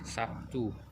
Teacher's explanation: Terlihat bunyi B berubah menjadi bunyi P sebagai akibat dari pengaruh bunyi T. Perubahan tersebut merupakan jenis asimilasi fonemis.